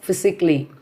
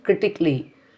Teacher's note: That A sound, we should not stress or lengthen the A sound. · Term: silent A